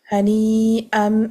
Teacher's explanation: If you're continuing, you will be applying the qalb rule because the tanween has been changed into the meme because the ba is in the next word. Hani-am, and then you apply the ghunna accordingly.